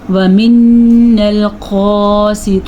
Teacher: وَمِنَّا الْقَاسِطُونَ نون کا غنہ اس پہ بھی ادا کرنا ہے، اور قاف کے اوپر جو کھڑی زبر ہے، قاف موٹا ہے، اسے بھی ادا کرنا ہے